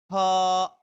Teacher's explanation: আমরা ফ উচ্চারণ করার সময় আপনার নিচের দাঁতটা উপরে ঠোঁটের সঙ্গে লাগিয়ে দেন উচ্চারণ করতে হবে